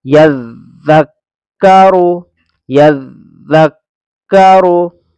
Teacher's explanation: ज़ाल में ज़बान थोड़ी सी बाहर को निकलती है, जरा सी रोक।